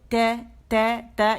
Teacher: جب زبان کی ٹپ جا کے جو سامنے کے اوپر کے دو دانت پیچھے جہاں پہ دانت نکلتے ہیں مسوڑے ہیں نا, تو اس جڑ پہ جب لگے گی مسوڑوں کے تو ت وہاں سے باریک ادا ہوگا